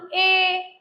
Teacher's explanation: ए कंठ से और ऊपर तालु से दोनों से आवाज आ रही है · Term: कंठ तालु